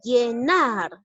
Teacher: Porque la mayor fuerza de voz está ubicado en la última sílaba. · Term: aguda